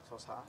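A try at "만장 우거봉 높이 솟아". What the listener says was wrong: 솟아가 세 번째 박까지 끌어줘야지. 소사 이렇게 만장 우거봉 높이 소사 이렇게 시작.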